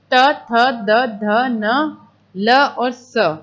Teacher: दंत जो आपके वर्ण है उसके अंदर क्या होते हैं कि जो जीभ है वो दांत से टच करती है, जैसे त थ द ध न ल और स, ठीक है।